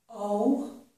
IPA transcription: oʊ